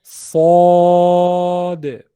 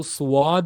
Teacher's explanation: موٹی آواز سے تو پڑھنا ہے, لیکن ہونٹوں کو زیادہ گول نہیں کرنا ہے, وہ واو کی آواز بیچ میں ایڈ ہو جائے گی. صاد.